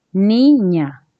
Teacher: Entonces, ni viene a ser la sílaba tónica.